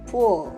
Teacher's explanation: as if we produce the sound w because we round our lips. The way you produce the word pull sounds like you pronounce p plus w before the o. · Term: labialization